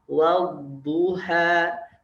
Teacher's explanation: Ngalir aja. Dia dha itu memiliki sifat rakhawah. Memiliki sifat rakhawah dan juga istitalah. Dialirkan. Wadduha.